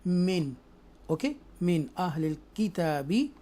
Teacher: यहाँ पर हम इजहार करेंगे आफ्टर नून साकिना थ्रोटल लेटर्स हरूफ हल्किया में से हमज़ा आ रहा है तो इसलिए हमने इसका नून साकिना का जो साउंड है वो क्लियर पढ़ेंगे